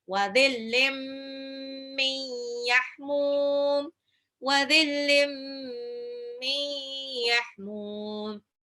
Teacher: Bukan z, tapi the. Ujung lidah seperti mau digigit. Seperti zal, tapi lebih tebal. Wadhillim, tanwin ketemu mim jadi irna. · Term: dha